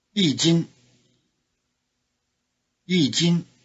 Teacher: the high tone of 一 changes to falling tone before the high tone of 斤.